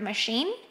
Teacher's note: the stress or the strongest syllable is the second one